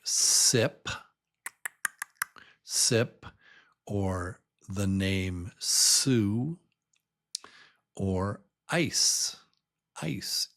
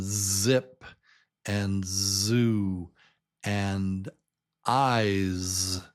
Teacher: The Z is the same as the S except you except you make us a voice with it. So, it's s with vibration. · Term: Z sound